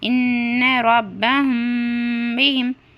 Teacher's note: ان نون پر تشدید دینے کی وجہ سے ہم کیا کرنا؟ نون میں غنہ کرنا